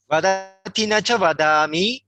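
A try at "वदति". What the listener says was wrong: You were saying vadati, in fact vadati. You've got to keep that as a shorter Vadati. So there's often quite a temptation.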